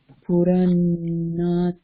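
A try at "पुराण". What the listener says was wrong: No, correct. Yeah.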